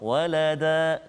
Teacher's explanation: jika kita waqaf dekat situ walada, maka dia tak jadilah ikhfa hakiki kat situ. Dia jadi mad iwad. Walada, dengan 2 harakat kita berhenti, kita waqaf.